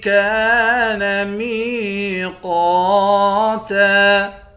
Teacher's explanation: کاف کے بعد الف ہے، ایک الف کے مقدار کھینچ کر پڑھیں گے۔ میم کے بعد یا ہے یا حروف مدہ ہے، یہاں بھی ایک الف کے مقدار کھینچ کر پڑھیں گے۔